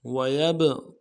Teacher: ويبقى میں واو کو نرم سے ادا کرنا ہے، یا کو با کے ساتھ ملانا ہے، با کے اوپر ساکن ہے، جب ساکن ہوگا تو قلقلہ کریں گے